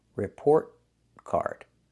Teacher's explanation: Stop the air. Don't make the complete T.